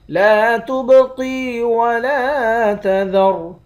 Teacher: لا تبقی ولا تذر، لام کے بعد الف ہے، ایک الف کے مقدار کھینچیں گے، با پر قلقلہ کریں گے، قاف کو موٹا پڑھیں گے، یا کے ساتھ ملا کر ایک الف کے مقدار کھینچ کر پڑھیں گے۔